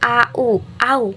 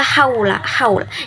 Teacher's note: Kalau fathah ketemu huruf wawu itu menghasilkan bunyi rangkap au